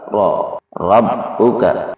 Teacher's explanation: hukumnya adalah tafkhim. Jadi cara membaca adalah ditebalkan. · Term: ra tafkhim